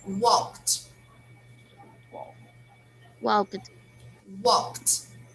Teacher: This verb here, walked, we should pronounce with a final T sound.